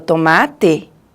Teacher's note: esse t, olha, para produzir, a gente tem um bloqueio total.